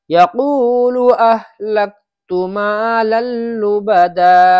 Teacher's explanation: اس تا کو کھینچنا نہیں ہے کیونکہ تا پہ پیش ہے، پیش کو بالکل بھی نہیں کھینچیں گے